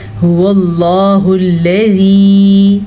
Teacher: हुवल्लाहुल्लज़ी, लाम बारीकी से पढ़ना है, जाल भी नरमी से पढ़ना है और ये या मद्दा है इसीलिए इसको खींच के पढ़ेंगे